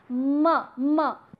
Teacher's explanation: when our oral cavity is blocked or it does not allow the air which is coming from the lungs to release, then the air finds its way from the nose. And therefore, we come up with the sounds that have nasal texture. · the air is stopped from the mouth, and the same air finds its passage from the nose. Sometimes what happens that this particular air is being passed through both the passages, nose and mouth. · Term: nasal sounds